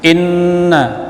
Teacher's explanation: Inna nun syiddah tajibul gunnah dibaca dengung